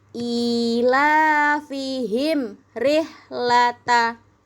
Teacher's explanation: Waidza roahum qolu terus ada mim ketemu sama ro ilafihim rihlata. Ya, em-nya biasa aja, enggak usah ditahan. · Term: izhar syafawi